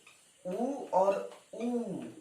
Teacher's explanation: ये सब ओष्ठ से बोले जाते हैं, होठ से बोले जाते हैं